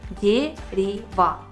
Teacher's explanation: Слышно, что в ударном слоге у нас есть звук Е, во втором И, в последнем А.